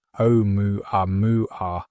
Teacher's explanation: with emphasis on the first syllable of each mua · The pronunciation of ʻOumuamua reflects the musical nature of the Hawaiian language. The initial character, the okina, represents a glottal stop, a brief pause in speech that is a consonant in Hawaiian.